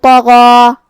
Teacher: حرف الغین کو ہم حلق کے اوپر والے حصے سے ادا کریں